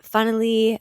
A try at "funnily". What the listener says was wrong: Funnily, it sounds like you're saying funneler.